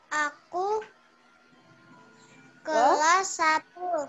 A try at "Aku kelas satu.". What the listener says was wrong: Pinter,